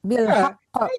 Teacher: Karena ada tasdid jadi harus dua kali.